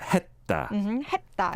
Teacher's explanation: when it comes as a 받침, then you don't really pronounce it as the S sound, but the D or T sound. · you don't really pronounce the 쌍시옷 here, like 했다. It's like a T almost, right?